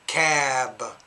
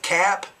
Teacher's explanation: the words that end in b the vowel should be longer in those words compared to the p at the end